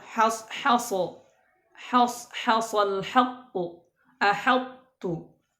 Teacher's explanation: tidak boleh menebalkan huruf ha ya pada contoh berikut